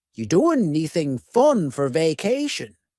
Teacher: we link together doing because we're going to drop the G it ends with the sound n the n Sound and then the next word anything we sometimes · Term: dropping linkings